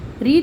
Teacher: ऋ जो है यह मूर्धन्य ध्वनि है